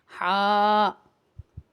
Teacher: ہا ہوتا ہے گلے سے ادا ہوتا ہے اور یہ باریک ہا ہے، موٹا ہا دوسرا ہوتا ہے، اسے ہم باریک طریقے سے ادا کریں گے۔